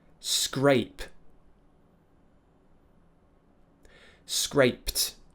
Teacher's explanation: because it ends with a p unvoiced consonant it will be a t sound